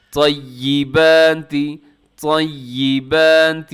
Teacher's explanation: طا کو تھوڑا سا اپنی طرف سے پوری کوشش کر کے طا کو اپنے موٹا پڑھنا ہے۔